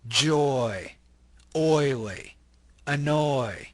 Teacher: the O Glides into the e sound notice o o if you say them separately you can kind